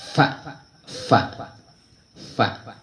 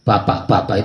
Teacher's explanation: Kalau fa berarti ilat apa bibir ngingsor ditekan gigi atas. Fa dudu bibir ketemu bibir.